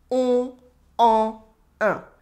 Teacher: when there is no liaison involved behind those sounds, there is no N in the sound. It's just on, en, un. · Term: nasal sounds